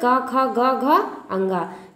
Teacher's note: अब क वर्ग का उच्चारण जो है वो कंठ का स्पर्श करता है।